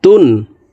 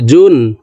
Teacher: তানবিনের উচ্চারণ নুন যুক্তভাবে তাড়াতাড়ি করিয়া পড়িতে হয়।